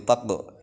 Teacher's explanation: Taqu itu adalah qalqalah sugro, memantul kecil, taqu. Kemudian har itu roknya adalah rok tafkhim, tebal, maka agak monyong bibirnya.